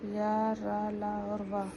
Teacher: तीसरा, अंतःस्थ व्यंजन। जिन व्यंजनों के उच्चारण में मुख बहुत संकुचित हो जाता है उन्हें अंतःस्थ व्यंजन कहते हैं